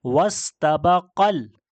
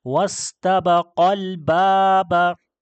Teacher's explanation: आगे मिसाल में देखें तो हम इसको पढ़ेंगे वस्तबक़ल, काफ को डायरेक्ट लाम के साथ मिलाएंगे · ये अलिफ बीच में से जिसको हमने लंबा करना था जो कि हुरूफ मद्दा था अलिफ, तो इसको हम नहीं पढ़ेंगे, काफ को डायरेक्ट लाम के साथ मिलाएंगे। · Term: हज़फ करना